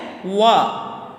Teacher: واو بیٹا ہمارے دونوں ہونٹوں کے گول ہونے سے یا دونوں ہونٹوں کے نامکمل ملنے سے ادا ہوتا ہے